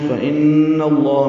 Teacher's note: فإن اللہ میں نون مشدد بغنہ لام اسم جلالہ زبر کی وجہ سے پر ہے.